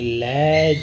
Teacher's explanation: लय जो व्यंजन है वो पार्श्विक है